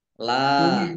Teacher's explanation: La lam fatka alif mat tobi'i, panjang 2 harokat.